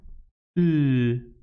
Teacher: the airflow occurs around the sides of the tongue. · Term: lateral